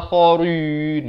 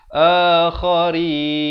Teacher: Rin jadi nipis, jangan baca akharin, itu tebal ya. Dia kena baca nipis.